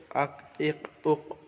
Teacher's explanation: এখানে কফ করা হয়েছে, কফ, হামজা কফ জবর আক, হামজা কফ জবর আক, জিবের গোড়া এবং তার বরাবর উপরের তালু